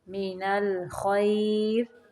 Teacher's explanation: را کو باریک پڑھیں گے